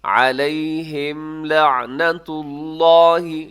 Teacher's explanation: اور آگے علیہم لعنت اللہ، علیہم لعنت اللہ، علیہم کے آخر میں میم ساکن ہے اور میم ساکن کے بعد لام ہے، تو یہاں پر اظہار شفوی ہوگا، یعنی آپ میم کی آواز کو ناک میں نہیں رکھیں گے زیادہ ٹائم، تیزی سے آپ اس کو پڑھ دیں گے۔